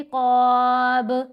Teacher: با پر کلکلا کر کے چھوڑیں گے، با کو ساکن کریں گے